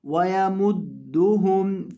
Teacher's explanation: ہا کو حلقے آخری حصے سے ادا کرنا ہے جو سینے کے ساتھ متصل ہے